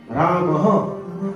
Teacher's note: તમારે બોલવું હોય તો રામ હ, તમે બોલો રામ હ તો શ્વાસ બહાર નીકળશે